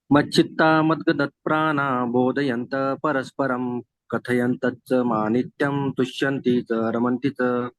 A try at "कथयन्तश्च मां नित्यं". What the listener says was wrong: कथयन्तश्च माम माम नित्यम बोलेगा। मां नित्यम नहीं, माम माम नित्यम। मां के ऊपर अनुस्वार है। कथयन्तश्च माम नित्यम। केवल माँ बोलेंगे, अनुस्वार नहीं बोलेंगे तो अर्थ पूरा बदली हो जाएगा।